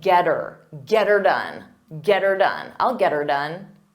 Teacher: we change the word it to her but we pronounce it as er so it will sound like get her